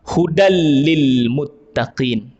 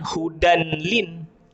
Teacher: Kita masukkan huruf lam itu terus ke dalam huruf sukun tu, ataupun huruf tanwin tu. Maknanya bukan kita baca dengan hudan lin. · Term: idgham